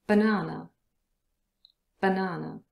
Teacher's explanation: the first A letter and the last A letter are both a schwa sound. B-na-na. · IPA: /bəˈnaː.nə/